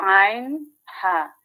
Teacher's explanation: কণ্ঠনালীর মধ্যখান হইতে উচ্চারিত হয় হরফ আইন হা, গলা চিপে রাখতে হয়